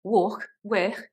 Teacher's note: we have this fricative k sound, which is more of a walk, work.